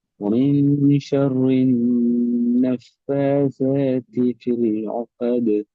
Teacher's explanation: இரண்டு பற்களுக்கும் இடையில் நாக்கு நிற்கும். நாக்கு வெளியே வந்திக்காது.